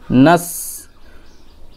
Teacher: আওয়াজ ঐরকম একটা আওয়াজ বের হবে নাস নুন সিন জাবার নাস জিহ্বার আগা হ্যাঁ নিচের সামনের দাঁতের আগাতে লাগিয়ে বা আগার একটু নিচে লাগিয়ে